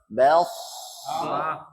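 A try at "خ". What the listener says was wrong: Jadi posisi mulutnya karena pangkal lidahnya naik, Pak. Bukan beh. Tapi elf.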